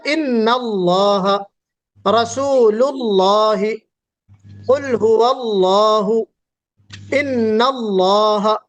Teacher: اس لفظ اللہ کے لام کو ہم پر پڑھیں گے، یعنی موٹا پڑھیں گے